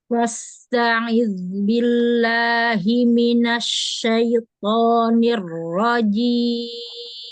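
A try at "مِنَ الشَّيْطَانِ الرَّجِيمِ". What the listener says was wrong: Huruf shin fathahnya ya yang suka malas buka kayaknya. Sya. Jadi a'udzubillahi minasyaiton, bukan syaiton, agak ke batas gitu. Jadi sya-nya itu antara a sama e jatuhnya. Jadi nggak full sya, nggak buka itu. Kan infitah kan?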